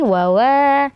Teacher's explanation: wa yang kedua itu Eh panjang Karena Mad Thobi'i